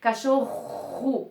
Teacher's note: eu escrevo com 2 R's, mas o som que sai é de apenas um R forte